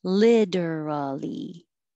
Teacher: you have a couple options for literally you can say literally t changes to a d and you have four syllables